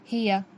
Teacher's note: हा, हलक के नीचे वाले हिस्से से अदा होता है। हा के नीचे ज़ेर ना खींचेंगे।